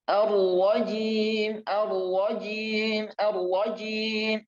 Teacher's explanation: Tinggal huruf ro-nya harus tebal. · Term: huruf tafkhim